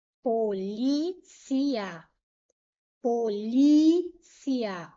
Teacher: O li é a sílaba tônica.